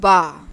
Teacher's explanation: अब देखिए, जब हम बा लेटर को प्रोनाउंस करते हैं तो यहाँ से आवाज़ जब आती है, तो जब हमारी आवाज़ यहाँ पहुँचती है, क्योंकि हमारे लिप्स आपस में दोनों जुड़े होते हैं, तो आवाज़ यहाँ आकर ब्लॉक हो जाती है, जिसकी वजह से उसमें शिद्दत पैदा हो, आवाज़ ब्लॉक हो जाती है और उसमें एक शिद्दत पैदा होती है।